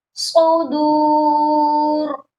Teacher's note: اور صاد کو موٹا بھی کر کے پڑھنا ہے